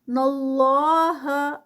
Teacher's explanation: اللہ کا نام ہیوی کیونکہ اس سے پہلے زبر